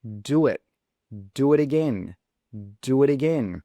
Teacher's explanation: simply add a W between the do and the it.